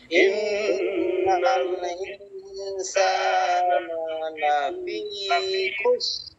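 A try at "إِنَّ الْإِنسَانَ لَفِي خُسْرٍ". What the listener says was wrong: এই যে র আসে নাই, খুসর। এই দেখেন র গুলো অনেক সময় আসে না, এই যে সবরের র আসে না, খসরের র আসে না, এই র আসে না, এই র যে আসে না এটা অনেকেরই ভুল হয়।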